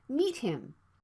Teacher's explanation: The plosive consonant T is right before the consonant sound H, so it can be unreleased. So you need to stop the T sound and move to the H sound right away.